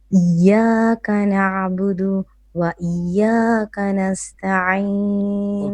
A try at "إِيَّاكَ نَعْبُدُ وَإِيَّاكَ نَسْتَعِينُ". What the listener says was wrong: But you paused. You said إياك نعبد and then you paused and then you said إياك نستعين. Now I am not too sure whether we can pause on there. But if you were pausing, you cannot say إياك نعبد.